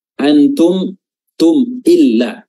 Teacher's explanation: Izhar baca jelas, mimnya dibaca jelas. Syafawi adalah bibir di mana huruf mim ini keluarnya dari makhrajnya ada di syafah atau bibir. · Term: izhar syafawi